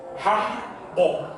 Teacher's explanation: Jangan lemah pantulannya, harus kuat. Karena dia qalqalah kubro.